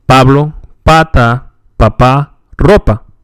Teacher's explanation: is a puff of air is expelled after the lips separate in spanish we hold back the air avoiding the pop that is heard in english